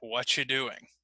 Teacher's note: when I say whatcha, it means I have cut the R completely. So it's completely gone.